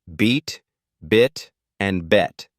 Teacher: for beat your tongue is high in your mouth and forward for bit it's slightly lower but still forward for bet it lowers further